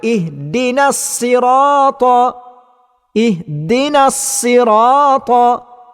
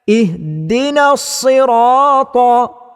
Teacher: Maka bacaan yang betul dan tepatnya ialah ihdinas sirata, iaitu huruf sad mesti dibaca dengan tebal. Dan tebal yang berlaku pada huruf sad ini ialah tebal yang sederhana. Kerana huruf sad ialah salah satu daripada huruf isti'la yang berbaris di bawah, maka bacaannya ialah bacaan yang kurang kuat.